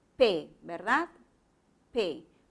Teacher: Este fonema, como te has dado cuenta, tiene que articularse con un cierre total de los labios. Los labios se juntan y luego se abren rápidamente cuando tú lo acompañas con una vocal. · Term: fonema P